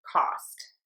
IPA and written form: kɑst (COST)